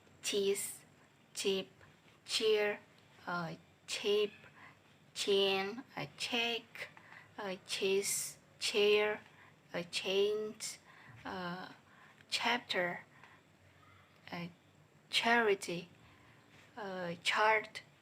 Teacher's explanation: Voiceless palatal affricative sound